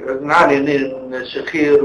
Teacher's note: خدتوا بالكم من صوت الخنفه بتاعته شكلها عامل ازاي؟ كأن مناخيره مكتومه تماما